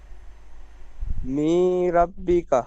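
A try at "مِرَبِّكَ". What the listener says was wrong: মি নয়, মিম থেকে র তাসদিদ যদি ধরতে হয় তাহলে কি হবে? মিম র জের মির, মির, পরিষ্কার বলেন। মির রব্বিকা।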